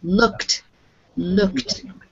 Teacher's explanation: when you have a c sound on the end and you are doing the past it's a t sound